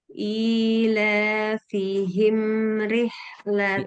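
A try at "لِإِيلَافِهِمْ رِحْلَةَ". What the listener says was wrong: Belum tipis. Ya, himnya belum setipis ri.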